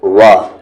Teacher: واو کو آپ کو لپس راؤنڈ کر کے بولنا ہے، وا، نہ کہ آپ وی کے ساؤنڈ پر بول دیں وا، تو یہ غلط ہے، وا، لپس کو راؤنڈ کرتے ہوئے۔